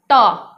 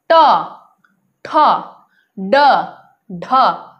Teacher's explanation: जिह्वा का मध्य भाग मूर्धा को टच कर रहा है। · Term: मूर्धन्य